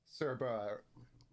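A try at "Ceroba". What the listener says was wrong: Right, well, it's just the syllable gap is in a different place, so your enunciation is not quite the same.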